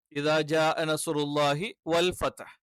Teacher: ഫ എന്ന് പറയുമ്പോൾ മുകളിലത്തെ പല്ല് അഥവാ മുൻപല്ലുകൾ അത് എന്ത് ചെയ്യും താഴെ ചുണ്ടിൽ ടച്ച് ചെയ്തുകൊണ്ടാണ് ഫ പലര് വ എന്നുള്ളത് അതേപോലെ ഉച്ചരിക്കാറുണ്ട് അത് തെറ്റാണ് അറബിയിൽ ചുണ്ട് വൃത്താകൃതിയിൽ വെച്ചുകൊണ്ടാണ്